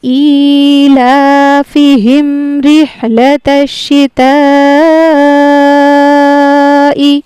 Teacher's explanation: اس کو ہمیں کھینچنا ہوتا ہے 4 الف کے برابر، اس کو کہتے ہیں مد متصل